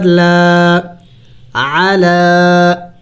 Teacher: عین زبر ع، لام کڑی زبر لا، علا، عالا نہیں پڑھیں گے اس لیے کہ عین کے اوپر حرکت ہے اور حرکت والے لفظ کو جلدی پڑھا جاتا ہے ، عالا نہیں پڑھیں گے، علا، اور یہ کڑی زبر لام